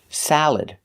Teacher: just make sure you put the stress on the first syllable